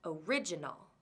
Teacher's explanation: it has second syllable stress